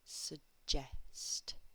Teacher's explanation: And the final thing I'm going to tell you about suggest is the stress unusually is on the second syllable. So this word is suggest.